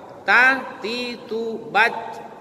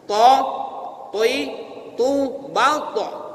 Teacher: Kalau to, bekerja mulut tuh, Bu. Kenapa? Karena pangkal lidah kita terangkat. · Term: isti'la